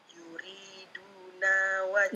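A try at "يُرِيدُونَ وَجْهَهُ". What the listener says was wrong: Enggak, jangan dipanjangin. Masih panjang, itu masih panjang. Yuriduna wajaha.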